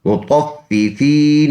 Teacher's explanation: اس فا کو ہم نے جماؤ کے ساتھ پڑھنا ہے شد کی وجہ سے، اور یہ دوسرا فا بھی ساتھ آیا ہے۔